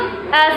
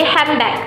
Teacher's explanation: Handbag itu secara pronunciation-nya N sama D-nya menjadi M ya, jadi handbag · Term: assimilation